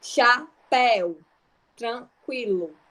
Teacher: encontro vocálico oral, que a pronúncia ela vai se dar exclusivamente pela boca